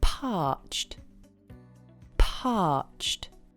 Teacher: Number four Very Thirsty - you can say I am Parched parched the pronunciation is parched it's a one-syllable word parched you don't pronounce -ed at the end of the word you say a soft /t/ sound